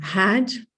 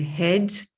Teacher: And then I always suggest so not only to think of pronouncing trap with your jaw more open, but also dress with your jaw somewhat more in a close position. So had is much more open, and head, you really hardly move your jaw.